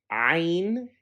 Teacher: it's a guttural sound that is made by constricting the air in the throat